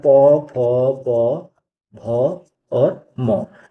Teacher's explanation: इन सभी को बोलने पे हमारे जो होंठ होते हैं वो आपस में एक साथ आ जाते हैं। और इसी के साथ साथ जो स्वर में होता है ऊ और बड़ा ऊ, ये भी क्या है, ओष्ठ की श्रेणी में ही आते हैं।